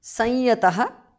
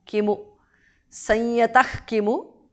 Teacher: Vibho, bhas mahapranah, bhavan, bha mahapranah, sanyatah, visarga changes to jihva mulya